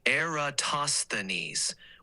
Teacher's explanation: with the emphasis on the third syllable, tos.